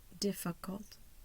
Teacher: I have a primary stress by the slash at the top in front of the D. Primary stress in the first syllable. I have a secondary stress in cult. So I see that little slash on the bottom before the C.